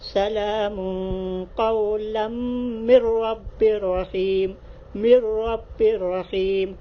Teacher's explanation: تو یہ نون ساکن کے بعد را کی مثال ہے اور تنوین کے بعد را کی مثال ہے، تو آپ غنہ کے بغیر پڑھیں گے، اس کو بھی غنہ نہیں کریں گے، غنہ کے بغیر پڑھیں گے۔